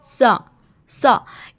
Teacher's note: ऊपर वाले जो दो दांत होते हैं प्यारे बच्चों, स्नाया उलिया उनको कहा जाता है, हमने वहाँ पे ज़बान की नोक को लगाकर थोड़ा सा बाहर निकालना है। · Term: सा के मखरज